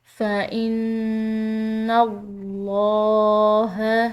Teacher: یہاں پر نون مشدد ہے، مشدد نون پر غنہ ہوتا ہے، اس پر ہم غنہ کریں گے، اور ساتھ میں لفظ اللہ کی لام پور ادا کی گئی ہے کیونکہ پیچھے کے حرف یعنی کہ نون کی زبر ہے۔